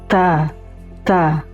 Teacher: Ketika menyebutkan huruf ta, ada angin yang keluar sedikit. Ta ta. Ketika disukunkan huruf ta ini tetap ada angin yang keluar. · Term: sifat hams